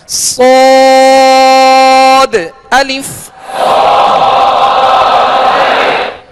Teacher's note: تو صاد کو ادا کرتے ہوئے اس کو پر پڑھنا ہے، موٹا پڑھنا ہے، حروف مستعلیہ میں سے ہے، بغیر ہونٹ گول کیے اس کو ادا کرنا ہے، اور سختی کے ساتھ یعنی سیٹی کی آواز اس میں پیدا ہو اس طرح ادا کرنا ہے